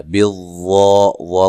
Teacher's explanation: بالظا کو موٹا ادا کرنا ہے اور مد اصلی ہے